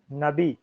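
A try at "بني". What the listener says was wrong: نبی کہاں ہے؟ الٹا کر دیا اس کو.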